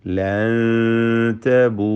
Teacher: സാക്കിന നൂൻ ഇഖ്ഫാ ഹഖീഖി നൽകി അവ്യക്തമാക്കി മണിച്ചുകൊണ്ട് ഉച്ചരിക്കേണ്ടതാണ്